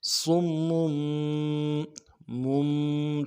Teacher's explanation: صم میں میم کے اوپر تشدید ہے، تنوین ہے، تشدید کے اوپر زور دیں گے، تنوین کو آگے میم کے ساتھ ملا کے پڑھیں گے، چھوٹی سی میم جو ہے اس کو بھی پڑھنا ہے۔